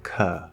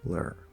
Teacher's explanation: The first syllable is stressed, ka. Second syllable is not, lur. Now there's still an arc in that second syllable, but just like for a stressed syllable where it's louder and longer, that arc goes up more and it comes out longer.